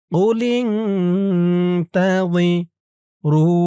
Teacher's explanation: তা জি বলা যাবে না জি বললে জালের উচ্চারণ হয়ে যাবে বলতে হবে ওই নরম করে